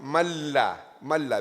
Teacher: It is actually we change the noon into a lam and you merge them. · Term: idgham bila ghunna